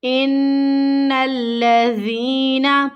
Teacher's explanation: ذال یا زیر ذی، حروف مد، یا ساکن سے پہلے زیر کی حرکت، حروف مد ہے، اسے ہمیں کھینچنا ہے ایک الف کی مقدار کے برابر · نون کو لام کے ساتھ مضبوطی کے ساتھ ملانا ہے